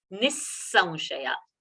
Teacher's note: after visarga, If a sa is coming, the visarga's pronunciation has to be taken as sa.